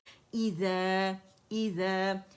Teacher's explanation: ई और ज़ा में बजिंग साउंड नहीं लाएंगे।